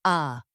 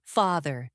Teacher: Many learners say this sound too short, too closed, or too similar to the a in their native language. But in American English, ah is long, open, and deep. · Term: the ah sound